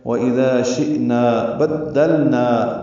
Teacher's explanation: با کو دال سے دال کو لام سے ملانا ہے، نا میں مد منفصل ہے، 1 مرتبہ پھر یہ 4 حرکات لمبا کریں گے مد منفصل کو۔